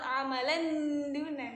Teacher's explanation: Pakainya n ya, bukan amalan duna, amalan duna. Pakai n tapi n-nya n samar. Bukan n banget kayak idhar, bukan amalan duna.